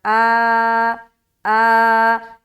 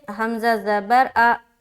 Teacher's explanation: حمزہ زبر آ، صرف زبر ہوتا تھا تب، لیکن یہاں پر اب الف کے ساتھ لگ کر آ رہا ہے تو اب یہ الف مدہ ہو گیا، ٹھیک ہے؟ یہ حرکت نہیں ہے، الف مدہ میں بدل گیا کیونکہ الف کے ساتھ آ رہا ہے۔ تو اب اسے ہم کھینچیں گے۔